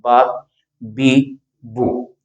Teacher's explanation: ہونٹ اوپر کی جانب کھلیں تو زبر ادا ہوتی ہے، نیچے کی جانب کھلیں تو زیر ادا ہوتی ہے، سامنے کو ہونٹ بڑھ جائیں تو اس کو پیش ادا ہوتی ہے. جیسے ہم کہتے ہیں او کہنے سے ہونٹ سامنے آ جاتے ہیں، تو پیش کا معنی سامنے ہوتا ہے. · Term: زبر، زیر، پیش